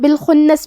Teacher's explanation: اقسم کلمت بالخنس میں یہاں حرف الخاء ہے، خاء کی ادائیگی حلق کے اوپر والے حصے سے ہے۔